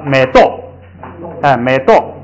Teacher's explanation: 他碰到后加字卡，他就得把调摁下来，就变成了美豆，美豆变成了往下四声